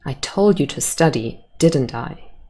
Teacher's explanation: i show you that i'm sure of that by using a falling intonation